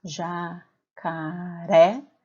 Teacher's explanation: Quando eu faço a separação de sílabas dessa palavra, jacaré, fica fácil observar que a sílaba tônica é a sílaba ré